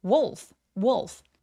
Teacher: 여기서의 wolf는 wolf가 아니라 wolf라고 오 소리가 날 수 있도록 입을 둥그렇게 말아주세요. wolf.